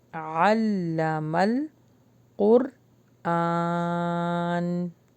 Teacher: قاف اور را کو جب ملائیں گے تو ہم باؤنس بیک نہیں کریں گے، اپنی آواز کو ہم روک لیں گے